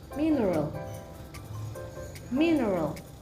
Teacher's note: The stress is located on the first syllable